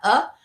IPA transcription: ɛ